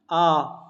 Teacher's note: आगे हमारा विव्रत स्वर, इसमें सबसे अधिक मुख खुलता है